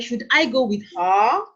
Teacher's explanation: make sure that your voice ends with a rising intonation at the end.